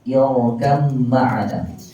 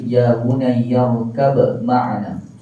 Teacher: Sebahagiannya mengidghamkan, yakni masukkan kedua-duanya, manakala sebahagian lain mengizharkan, yakni menjelaskan sebutan setiap huruf.